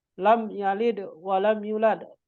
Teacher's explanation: mim mati bertemu dengan ya, maka termasuk izhar syafawi, maka harus dibaca dengan izhar. Artinya harus dibaca dengan jelas, terang, tidak boleh didengungkan.